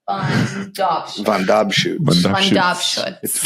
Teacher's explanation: you put the emphasis on the middle syllable